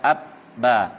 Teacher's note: Kita akan mendapati suara ba keluar dari kedua bibir.